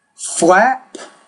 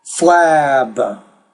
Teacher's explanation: the P like the K is a voiceless consonant which means the vowel before it will be shorter